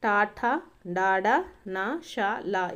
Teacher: శిరస్సు అనమాట, లేదా దవడ మధ్య భాగం నుంచి పుట్టేటటువంటి అక్షరాలను వచ్చేసి మూర్ధన్యాలు అంటారు